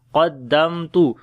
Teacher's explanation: قاف کو موٹا پڑھیں گے، میم کے اوپر اظہار شفوی ہوگا اور صفت توسط بھی ہے، قدمت لحیاتی، یا کو لمبا کریں